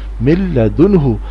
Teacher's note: مل لام زبر لا، مل دانون پیش دن، مل دن ہا پیشو، مل دن ہو۔ اب یہاں نون ساکن کے بعد حروف حلقی میں سے ہا ہے، اس لیے نون کی آواز ناک میں سے نہیں آئے گی